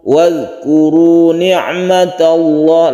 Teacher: lafaz Allah yang lafdzul jalalah kita sebut lafdzul jalalah, hukumnya tafkhim atau mufakham, dibaca tebal.